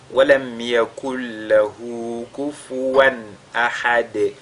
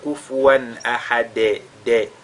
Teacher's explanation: Et à chaque fois qu'on fait qalqala sur la lettre dal, on a indiqué qu'il y a des erreurs qu'il faudra éviter. Notamment, il faudra éviter de lire ce dal là comme un e. On entend kufuwan ahad, de.